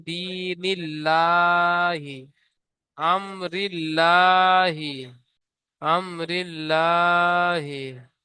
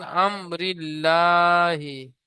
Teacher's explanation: আল্লাহ শব্দের ডান দিকে জের এসেছে, তাই আল্লাহ লামকে বারিক করে পড়তে হবে।